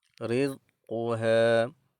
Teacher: Huruf ra berbaris di bawah kita akan baca secara nipis.